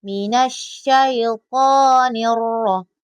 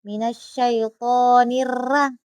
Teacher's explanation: Karena ro ini ee berbaris fathah ee termasuk juga tasdid maka harus tebal.